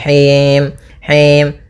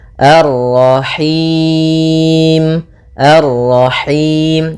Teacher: dia lepas dari yang namanya masuk hidung dan juga lepas dari namanya imalah, yaitu harus kasrah sempurna